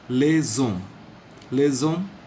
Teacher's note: The S will be pronounced as Z because the next word begins with a silent H.